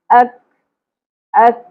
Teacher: کاف کو باریکی سے ادا کریں گے اور ہلکی سی کھ کی آواز آئے گی، زیادہ کھا نہیں بنانا.